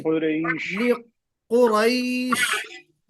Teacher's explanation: रैश नहीं होना चाहिए, मजहूल नहीं।